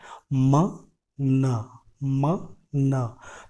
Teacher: Nasal जैसे नाम से ही लग रहा है कि हम अपने एयर फ्लो को नाक से रिलीज करते हैं। इसके एग्जाम्पल्स हैं म, न, म, न।